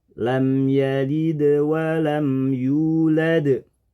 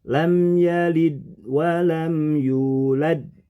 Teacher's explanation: menemukan huruf Dal sukun dua kali pada lam yalid dan yulad menurut aturan tajwid pengucapan Dal sukun itu harus disertai dengan Qalqalah